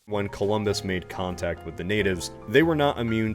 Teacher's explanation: sometimes his glottal stops seem to be hard attack and or the final T on the preceding word